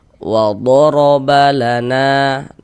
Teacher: huruf ro dibaca tebal maka pangkal lisan kita naik terangkat ke atas ketika kita mengucapkannya. Tebalkan huruf r-nya.